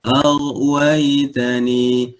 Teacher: ghain sifatnya adalah rakhawah, aliran suara.